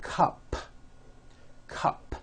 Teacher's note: it ends with an unvoiced p